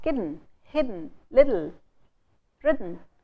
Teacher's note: At the end of words like hidden, little, kitten, the sound n and l, which are actually consonants, turn into vowels. · you do not need to add the e or a sound between d and n and t and l. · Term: semi-vowels